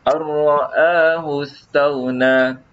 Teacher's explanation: huruf nun ni ditiadakan terus. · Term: idgham bila gunnah